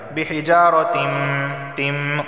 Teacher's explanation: دیکھیں ادغام کس طرح ہو رہا ہے کہ تنوین کو میم میں داخل کر رہے ہیں، بحجارتم تم، اور ناک سے بھی آواز آ رہی ہے، اس کو کہتے ہیں ادغام بالغنہ۔